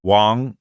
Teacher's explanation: Wang, second tone is a really common surname